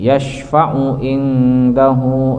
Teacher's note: nun mati menghadapi dal ikhfa aqrab. Jadi nun mati atau tanwin fathahtain, dhammahtain atau kasratain menghadapi huruf ta po dal itu aqrab, tidak terlalu didengungkan.